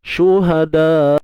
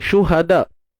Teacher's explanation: Syiddah ni tertahan suara. Syuhada. Ada bunyi hamzah kat ujung tu. Jangan kosong aja. Syuhada. Kan tak nampak pula bunyi hamzah tu. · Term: bunyi hamzah yang mati